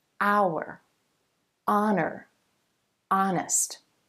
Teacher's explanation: Even though you see the consonant letter H, that H is silent, and the first sound you hear in each word is actually a vowel sound.